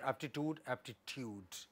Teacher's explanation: They don't belong to the same group. Whereas pa makes the coda of the earlier syllable, the preceding syllable, ta makes the onset of the following syllable.